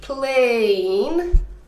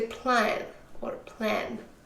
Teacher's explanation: Right, so a lot of my Chinese students would, for example, have a problem with a long A, and instead of saying plane, right, they would say plan or plan